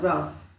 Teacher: अंदर से आने वाली वायु जिह्वा से टकराकर शीघ्रता के साथ कंपन पैदा करती है। लुंठित का उदाहरण है र।